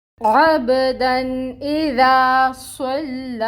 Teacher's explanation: لام کو باریک رکھنا ہے، موٹا نہیں کرنا۔ صاد پر ہے، صاد کو ہم نے پر کر کے پڑھنا ہے، دھیان یہ رکھنا ہے کہ لام اس کے ساتھ پر نہ ہو، موٹی آواز نہ نکلے لام کی۔